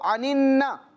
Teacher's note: ایک مرتبہ یہ پڑھا جائے گا پہلے والے نون کی حرکت یعنی کہ زیر کے ساتھ ملا کر، اور دوسری مرتبہ پڑھا جائے گا اپنی حرکت کے ساتھ ملا کر ذرا رک کر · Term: مشدد